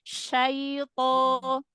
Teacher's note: coba huruf linnya jangan masuk ke hidung